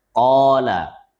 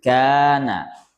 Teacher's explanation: Kalau didahului qaf jadi tebal. Qala. Kalau didahului kaf jadi tarqiq, tipis.